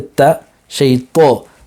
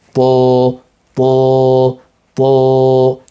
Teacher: We're keeping at a high degree, so the tip of the tongue is at the root of the two incisors, and we're keeping the back end of the tongue high up to create this po sound, a heavy sound.